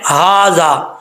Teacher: کے ساتھ ہے حلق کا، اس حلق سے ادا ہوتا ہے، تو سینے کی طرف سے اس کی آواز نکلتی ہے ہا بھاری ساؤنڈ کے ساتھ